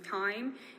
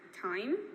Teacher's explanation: So there is the retraction of diphthongs with low back. So the diphthong I is retracted, so instead of saying time, it goes back, so it's time.